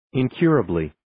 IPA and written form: in'kjuərəbli (Incurably)